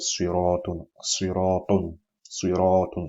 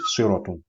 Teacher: alif is dragging the length of the vowel sound on the preceding letter